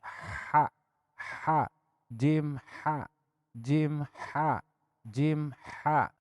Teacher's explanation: Ieu ha bijilna tina tengah tenggorokan.